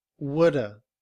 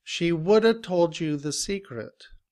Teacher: We say woulda. Would stays the same, but have is reduced to the schwa and sounds like woulda.